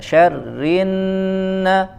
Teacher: ada syarrinna, tasydid ditekan ke makhraj huruf nun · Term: nun bertasydid